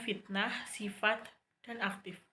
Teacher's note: Konsonan labiodental tak bersuara F, tapi bersuara V.